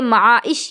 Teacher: آپ اس میں آواز کو اگر چاہیں نا کہ میں فوراً بند کر لوں تو نہیں ہوگا، کچھ نہ کچھ آواز جاری رہ ہی جائے گی۔ معائش کی شین، آپ میں سے ہر کوئی خود سے بھی بول کر اس کو دیکھ سکتی ہیں، آپ خود بولیں گی تو سمجھ میں آئے گا۔